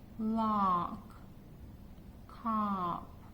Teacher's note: is dropped and you round your lips so it's ah sound it's not a front vowel sound it's more of the back and you don't see the body of the tongue when you · for ah as in cop you have to make sure that your jaw is dropped and you round your lips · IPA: /ɑ/